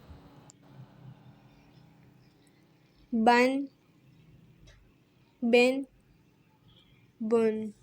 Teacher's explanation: با جو ہے دونوں ہونٹوں کے تر حصے سے ادا ہوتا ہے۔ با کو ہمیں ایک الف کی مقدار کھینچنا ہے۔